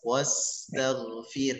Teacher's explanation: firih ro-nya dibaca tipis karena huruf sebelumnya harokatnya kasrah. Firih tidak firuh, tidak firuh, maka tidak tepat dengan hukum ro itu ada bab khusus dalam tajwid.